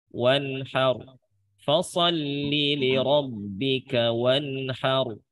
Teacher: Nun sukun itu tetap ada dengung, dengungnya asliyah karena sifatnya gunnah.